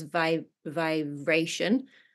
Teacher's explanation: there was one part where you were saying vibration and the B sounded more like a V so it came out as VI vibration a little bit VI